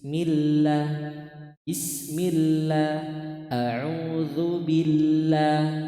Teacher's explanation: Lafaz Allah ketika harokat sebelumnya kasroh, dia dibaca tipis.